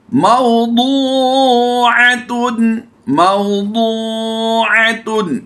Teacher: दू दाल की अदायगी नहीं बल्कि दौद की अदायगी हमने करनी है